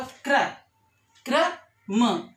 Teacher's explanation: क जो है कम देर के लिए बोला गया, रा पर जोर दिया गया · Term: पदेन